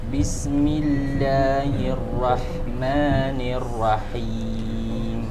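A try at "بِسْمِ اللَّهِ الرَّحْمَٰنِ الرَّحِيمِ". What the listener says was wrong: Ra salah, bukan ra ya. Tapi ra tebal. Bismillahirrahman salah. Bukan ra. Tapi ar-ra. Bismillahirrahmanirrahim.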